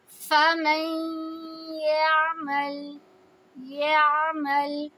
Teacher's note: میم کو یا سے ملا رہے ہیں تو اسی میں ہی نون کی آواز شامل ہو رہی ہے غنہ کی وجہ سے